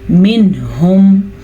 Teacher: منہم، اب یہ دیکھیں نون ساکن کے بعد ہمارے پاس ہا ہے، ہم یہاں پہ چھپا نہیں سکتے کیونکہ حروف ہلکی اگر آ جائیں نون ساکن کے بعد یا نون تنوین کے بعد تو نون ساکن یا تنوین کو ظاہر کر کے پڑھتے ہیں، بغیر غنّے کے پڑھتے ہیں